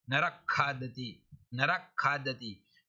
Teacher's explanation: ख हो तो विसर्ग के स्थान पर अर्ध विसर्ग हो जाएगा, जिह्वा मूलिया। नरक खादती, नरक खादती।